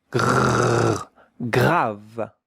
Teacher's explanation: Grav with the French R